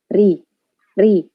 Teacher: ri itu lidahnya seperti biasa aja, tetap ada getar sedikit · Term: rok tipis